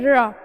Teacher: जीभ ऊपर गई और थोड़ी सी मुड़ गई, तब सही उच्चारण होता है र का